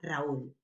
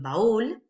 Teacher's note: en estas combinaciones es decir encerrada más abierta abierta más cerrada cuando en esta combinación la vocal cerrada es tónica es decir es la fuerte estamos hablando de un hiato